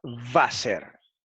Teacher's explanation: se pronuncia como una V inglesa, no como una W inglesa y también española